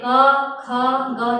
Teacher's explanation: आपकी कंठ से यानी कि गले से ये वर्ण का उच्चारण होता है